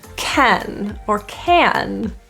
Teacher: the vowel here is often reduced to a schwa so it's a little think of it like a cut pronunciation